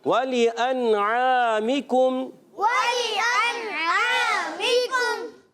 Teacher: واو کی ادائیگی ہونٹوں کی گولائی سے, لام زیر لی اس کو کھینچنا نہیں ہے.